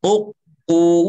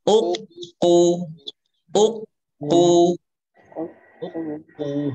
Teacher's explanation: U-nya monyong, kemudian ketika masuk ke qaf itu hakikatnya itu ada qaf yang pertama sukun. Jadi jangan monyong. Jangan gini.